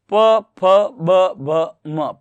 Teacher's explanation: प वर्ग ओष्ठ का होता है